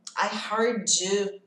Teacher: Ele junta o D com o Y. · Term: som grudado